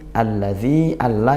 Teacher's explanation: idgham Syamsiyah dibaca masuk langsung ke huruf syamsiahnya huruf lam dzi Mad thobii kita baca panjang satu Alif atau dua harakat